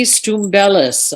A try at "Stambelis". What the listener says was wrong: close. Well, we usually drop the U and just say Stambelis.